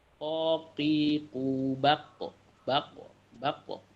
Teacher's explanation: Hamzah, ta dan kaf. Ini biasanya yang huruf kol-kolah ini ketika sukun mantul ya, qaf ya.